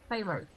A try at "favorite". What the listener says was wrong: Favorito in English has 2 syllables.